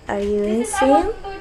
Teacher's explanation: It is for showing criticism or disagree, so you can use rising tone.